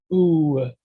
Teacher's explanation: has the oo sound and it has that w sound at the end as it produces the sound naturally